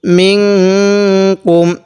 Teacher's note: এই নুনের সাথে মিন কাফ মিম পেশ কুম মিন কুম এখানে নুনের মধ্যে নাকের বাঁশি দ্বারা গুণনা করব কারণ নুন সাকিনের পরে ইতফার যে 15 টি হরফ আছে এই